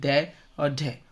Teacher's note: जिस उच्चारण में जिभ्या की नोक झटके से गिरती है तो वह उत्क्षिप्त बोले तो फेंका हुआ ध्वनि कहलाती है। जैसे ड और ढ उच्छिप्त ध्वनियां है।